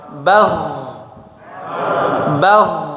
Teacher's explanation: Jadi suaranya mengalir karena dua sisi makhrajnya tidak menempel kuat ya. Tidak menempel kuat. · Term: sukun